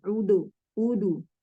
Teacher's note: Kalau Mesir, qalqalah terpengaruh oleh harokat sebelum dan setelahnya. Ketika huruf sebelumnya dhammah, dia ikutan dhammah.